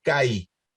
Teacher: Dijimos que se acentúa la primera vocal del diptongo, por lo tanto esto es CAI.